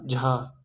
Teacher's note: तालव्य यानी तालु से उच्चारण होने वाला, तो यानी चा वर्ग हो गया, और चा वर्ग में चा, छा, जा, झा, इयां। महाप्राण यानी ज़्यादा वायु निकले, और घोष यानी कंपन हो गले में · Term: तालव्य महाप्राण घोष व्यंजन